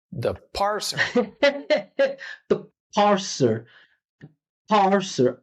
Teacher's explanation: The parser completely. You hear how strong that P sound was? We could not hear the vowel sound at all. There was no vowel.